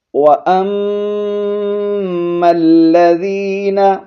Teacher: میم پر شد ہے، غنہ کریں گے اور میم کو لام کے ساتھ ملا کر پڑھیں گے